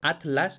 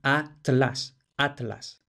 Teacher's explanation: en muchas variedades de hispanoamérica pronuncian TL homosilábicos es decir en la misma sílaba entonces pronunciaran Atlas Atlas